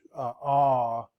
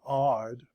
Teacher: we don't differentiate between ah, and the O in odd. Both those are exactly the same sounds